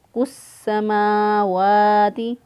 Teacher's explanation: सीन जो है इससे पहले अलिफ लाम आया लेकिन अलिफ लाम पढ़ने में नहीं आया, डायरेक्ट सीन के साथ मिला दिया इसको, काफ को सीन के साथ मिला दिया, क्योंकि इस्लाम को सीन बनाकर सीन का सीन में इदगाम किया हुआ है, और शद मुशद्दद हरफ चाहता है पीछे वाले ज़बर ज़ेर पेश वाले हरफ के साथ मिले, लिहाजा काफ पेश को काफ पेश के साथ इसको मिला दिया।